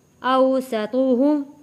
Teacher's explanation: سین کی سیٹی جیسی آواز